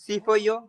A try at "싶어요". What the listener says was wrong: না, শিপ হয়, সিপ হয় না, শিপ হয়। মু বগু শিপ হয়। 싶어요 না 싶어요 শি বগো 싶어요